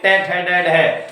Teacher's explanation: जब ट वाली लाइन बोलते हैं ना, तो सीधे हमारे मसूड़ों पे जाके जीभ लगती है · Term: मूर्धन्य व्यंजन